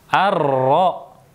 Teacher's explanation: Wungu dan kesalahan yang sering terjadi pada huruf ro diantaranya adalah rok seringkali digetarkan secara berlebihan